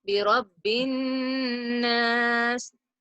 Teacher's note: The Noon Shadda has to be recited with 2 counts of nasalization.